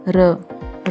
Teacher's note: Second है र लुंठित, जिसके उच्चारण में जीभ तालू से लुढ़ककर स्पर्श करे। र को लुंठित व्यंजन कहते हैं, इसको प्रकंपित व्यंजन भी कहते हैं।